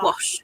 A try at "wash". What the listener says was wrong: There's no R in wash.